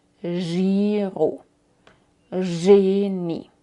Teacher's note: Engagieren es j porque viene del francés, o génie, o giroconto. Así haces como una sh, pero con voz, un poco más suave que la sh, y con voz.